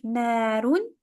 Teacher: So na is longer because of the alif.